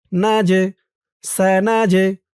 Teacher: এই জিমটা কলকলার হরফ ধাক্কা দিয়ে পড়তে হবে।